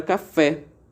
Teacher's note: como a tonicidade está no fé, ela é oxítona e ela termina com e.